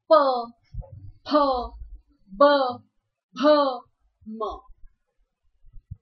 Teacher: प वर्ग अर्थात ओष्ठ वर्ग। इस वर्ग में आने वाले व्यंजन को हम होठों से प्रोनाउंस करते हैं, होठों से इनका उच्चारण किया जाता है, इसीलिए इसे ओष्ठ वर्ग कहा जाता है।